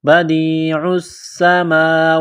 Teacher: بدیع السماوات، دال کو یا کے ساتھ پلس کرنا ہے، عین کو سین کے ساتھ ملانا ہے، پلس کرنا ہے، سین میں سیٹی کی آواز پیدا کرنی ہے، بدیع السماوات، میم کے اوپر کڑا زبر ہے، ایک الف کے لمٹ میں کھینچنا ہے